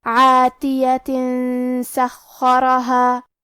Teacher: اگر ہم یہ آیت کو اگلی آیت کے ساتھ ملا کے پڑھے تو کیونکہ حرف السین کلمت سخرہا حروف الاخفاء میں سے ہے تو ہمیں یہ حکم کو غنہ کے ساتھ ادا کرنا ہے